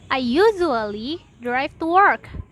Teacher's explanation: Louder pronunciation on content words, for instance in I usually drive to work. The words usually and work are pronounced louder than the other words. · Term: sentence stress